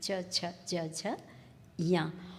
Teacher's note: हम जब उच्चारण करते हैं तो देखते हैं कि इसका उच्चारण तालु से किया जाता है। कंठ के बाद का स्थान तालु है।